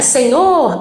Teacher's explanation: a forte é o nor, né? É a última, é uma oxítona.